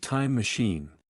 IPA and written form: taɪm məˈʃiːn (Time machine)